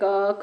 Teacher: इनको बोलते समय जो है कोई भी कंपन नहीं होता है